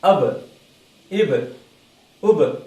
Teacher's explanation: சுக்குனுக்கும் லம்மாவுக்கும் நடுவில் அபு அதுவும் இல்ல, அப் அப்படியும் இல்ல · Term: கல்கலா